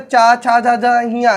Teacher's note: और साथ में हमने आपको नहीं बताया चा, छा, झा, झा, हिया, ये जो 5 व्यंजन आपके चवर्ग पूरा आ जाता है, इस चवर्ग को स्पर्श संघर्षी व्यंजन कहते हैं